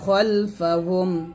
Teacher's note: এখানে খাল না বলে খল বলতে হবে